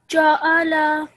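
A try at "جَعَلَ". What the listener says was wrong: Let's just make this a slightly thinner. Ja'ala.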